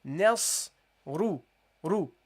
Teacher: the sad and the ra are heavy, but the noon at the beginning is not heavy. So don't say ma, nos.